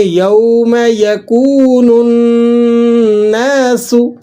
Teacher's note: نون پر شد لگی ہوئی ہے، یہاں پر آپ نے غنہ بھی ادا کرنا ہے اور ذرا جماؤ کے ساتھ بھی اس کو پڑھنا ہے۔ · سین باریک حروفوں میں سے ہے اور یہاں سیٹی بھی نکلتی ہے